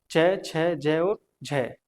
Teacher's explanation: च, छ, ज और झ इनको हम स्पर्श संघर्षी व्यंजन कहते हैं।